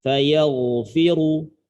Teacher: Ro-nya mufakhamah, ro-nya tebal. Maka ketika kita baca dengan cara diteruskan, otomatis ro-nya ini harus dibaca tebal.